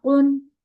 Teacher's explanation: पूरा नून अदा करना है, ठीक है। नून को नाक में नहीं ले जाना।